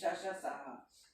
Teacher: क्योंकि घर्षण होता है बोलने में इसलिए संघर्षी हो गए, और उष्ण होते हैं ये व्यंजन, तो ये उष्ण संघर्षी हो गए।